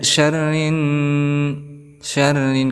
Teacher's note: syarri di sini ada ra berharokat kasrah, maka kita hukumi tarqiq artinya tipis.